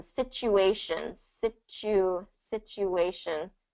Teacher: So you have the T between the two vowels here, but the first syllable is the stress.